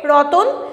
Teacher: মাঝখানে স্বরধ্বনির আগমন ঘটছে